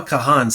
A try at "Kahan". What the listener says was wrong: It's just Noah Khan. You don't say the H. Yeah, it's just Khan. Khan.